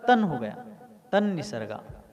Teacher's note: जैसे तत् निसर्गात, तो निसर्ग में न है, निसर्ग शब्द में क्या है, न है, तो तत् के आगे न आने से तत् का जो अंतिम त है उसका भी न हो गया, इसलिए तत् का तन हो गया, तन निसर्गा।